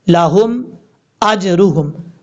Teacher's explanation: हमजा के बाद जो जीम है, ये जीम हरूफ कलकला में से है, साकिन है, तो यहाँ पर कलकला करेंगे